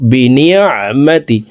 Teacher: আইন হরফকে হলকের মধ্যখান থেকে উচ্চারণ করব